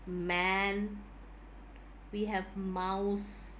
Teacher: through the nasal cavity even though the articulators used that is the two lips are in complete contact and hence it produces a voiced libio or can i say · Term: bilabial nasal